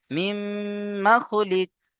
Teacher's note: মিমের উপরে তাসদিদ গুণনা করা ওয়াজিব, কিন্তু খেয়াল করবেন গুণনা করতে গিয়ে মিমটা যেন টান না হয়ে যায়, তাই না? মিম মা যেন না হয়, কারণ মিমের উপরে আবার জাবার আছে হারাকাত, হারাকাতের পড়াকে তাড়াতাড়ি পড়তে হবে।